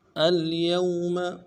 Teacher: ہے، لام ساکن ہے، اس میں قنانی تھوڑا سا کریں گے، یا کو واو کے ساتھ ملانا ہے، واو لین ہے، بغیر کھینچے پڑھیں گے ، میم کو نرم سے ادا کریں گے، اليوم نختم نون